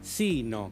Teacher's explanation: se pronuncia sino, con el acento en la i, teóricamente un acento prosódico. Bien, ese va cuando se usa, cuando hay una oposición.